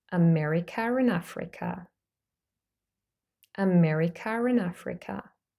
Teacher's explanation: We have a schwa followed by r and a. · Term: intrusive R